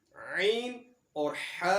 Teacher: حلق کے درمیان میں سے ادا ہونے والے 2 حروف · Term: حروف حلقی